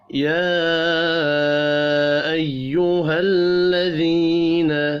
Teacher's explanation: یا کے اوپر چھوٹی مد ہے، 3 الف کے برابر کھینچ کر پڑھیں گے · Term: یا مدہ